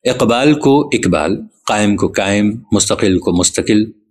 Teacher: تمام ان الفاظ میں جہاں قاف آتا ہے وہ کاف کی آواز نکالتے ہیں